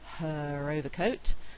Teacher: in her overcoat i'm likely to say the r because the next word begins with a vowel sound · if the word is followed by a word beginning with a vowel which is what we've got here then i'm likely to say the r sound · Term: linking r